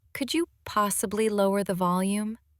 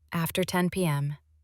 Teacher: a gentle rise on the request, Could you possibly lower the volume? and a soft fall on the reason